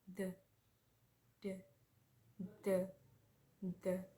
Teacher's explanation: The sound is voiced coronal fricative consonant